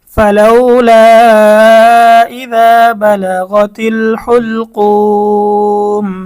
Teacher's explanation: পেশের পরে ওয়াও সাকিন, মদের হরফের পরে ওয়াকফ করার কারণে মধ্যে আরজি 3 আলিফ টানতে হবে